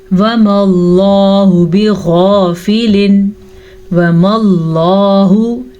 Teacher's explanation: लफ्ज़ अल्लाह को पुर पढ़ें क्योंकि लफ्ज़ अल्लाह से पीछे हर्फ पे ज़बर है